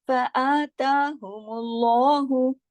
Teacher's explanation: لام کو موٹا کیا ہم نے میم کے پیش کی وجہ سے. جب اللہ کا نام آنے سے پہلے میم پر یا جو بھی حرف ہو اس پر زبر یا پیش ہو، یعنی کسرہ یا دمہ ہو، تو اللہ کے لام کو ہیوی کر کے پڑھا جاتا ہے، ٹھیک ہے.